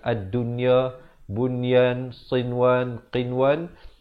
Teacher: ad-dunya, bunyan, sinwan, qinwan, itu jangan didengungkan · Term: izhar mutlak